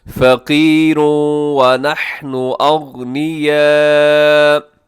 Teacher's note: قالوا ان اللہ فقیر ونحن اغنیاء، جی یہاں پہ ادغام ہو رہا ہے، فقیرن کے آخر میں تنوین ہے، اور تنوین کے بعد یہاں پہ واو ہے، تو آپ یہاں پہ ادغام کریں گے غنے کے ساتھ